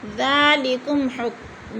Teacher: میم ساکن کے بعد کاف آ گیا ہے تو ادھر اظہار شفی، گنہ نہیں کریں گے۔